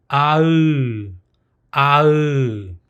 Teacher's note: this is a pronunciation of the combined vowels of ah and the oo